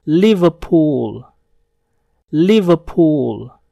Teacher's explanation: Bunyi R pada kata ini tidak terdengar.